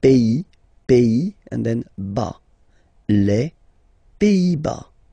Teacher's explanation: Les Pays-Bas. Final S here, not pronounced.